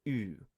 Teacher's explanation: So in the time of Socrates and Plato, it probably stands for oo, the front vowel u that people may know from French or German